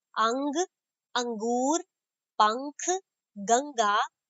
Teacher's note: अनुस्वार अंग का उच्चारण नाक से होता है, इसे अनुस्वार कहते हैं।